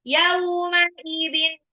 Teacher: tanwin ketemu ain harus baca jelas, nggak boleh di gunnah karena dia izhar · yaunya sifat lin, ya-nya harokat fathah ketemu waw sukun